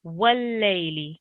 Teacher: the lips are rounded, and it shouldn't be a V sound. It should be like a W sound